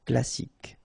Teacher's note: You don't insist on the final E, so you get K as the last sound.